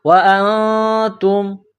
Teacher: انفسکم وانتم، حمزہ کو نون کے ساتھ ملانا ہے۔ نون ساکن کے بعد تا ہے، حروف اخفا ہے تو غنہ کریں گے۔